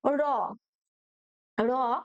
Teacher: র উচ্চারণের সময় কিন্তু জিহ্বার অগ্রভাগ দন্তমূলকে দ্রুত আঘাত করে কাঁপতে থাকে, তাই একে কিন্তু কম্পনজাত ধ্বনি বলা হয়।